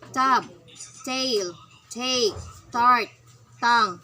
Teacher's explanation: The alveolar stops. Voiceless alveolar stop.